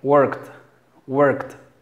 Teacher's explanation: fíjate, no se pronuncia la E, pero es KT, worked, worked. No es work, sino es este símbolo que parece como un 3, es como una E, es muy parecido al sonido de la E, pero siempre va acompañado de la letra R.